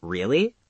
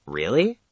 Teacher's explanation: If you say really with a rising tone, it's a question. If you say really with a falling tone, it means you are bored or you don't believe someone.